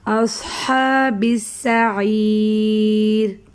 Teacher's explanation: صاد بھی مستعلیہ حروف میں سے ہے، اس لیے اس کو موٹا پڑھیں گے